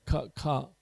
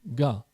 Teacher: And then when you go ka, ka, you make a little sound. Well, if you make a sound while you go ka, it becomes ga. Same part of the throat, ka, but ga.